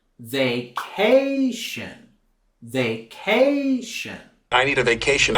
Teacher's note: we're going to be raising our voice and intonation on that second syllable